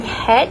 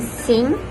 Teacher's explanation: Both phoneme h and eng are voiced, meaning that the vocal folds vibrate when producing these sounds. However, the sound of h is less pronounced in terms of vibration because it only involves airflow through the glottis, while phoneme eng causes more vibration because it is nasal airflow. To feel the difference, try holding your hand to your throat.